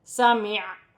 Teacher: وقف کی صورت میں زبر گر جائے گی اور عین ساکن ہو جائے گی. وقف کی صورت میں عین کی ہلکی سی آواز آئے گی